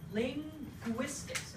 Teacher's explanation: you stop the air going through the nose and you push it back through the mouth and it makes a gu sound because they're both voiced stops made at the velum